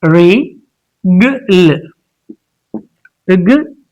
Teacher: in this, stress is on the first syllable